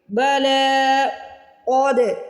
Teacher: بلا قد، ایک تو قاف کو موٹا پڑھنا ہے یہاں پہ، دوسرا دال کو ہلا کے ادا کرنا ہے